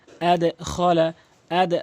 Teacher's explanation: এখানে কখনো আদ হবে না নিচের দিকে সাউন্ড হবে আদে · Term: কল কলার